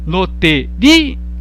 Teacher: Perceba que não há um ditongo aqui. Há duas vogais próximas, mas elas não estão na mesma sílaba. Isso aqui, inclusive, seria um exemplo de hiato.